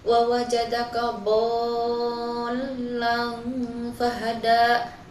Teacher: dihukumi ikhfa karena tanwin bertemu huruf fa. Cara membacanya itu samar tapi disertai dengan dengung. Kemudian pada kata hada itu dihukumi mad tabi'i yang dibaca panjang hingga 2 harokat.